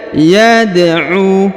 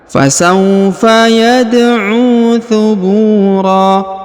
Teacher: huruf U dipanjangkan kurang lebih 2 harokat karena di depannya terdapat waw sukun, sedangkan alifnya tidak dibaca ya.